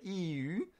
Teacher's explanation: When I say EU, the only thing that changes are my rounded lips.